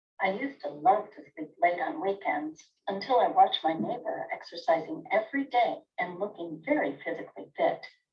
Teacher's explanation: there is a slight pause, very slight pause right there between neighbor and exercising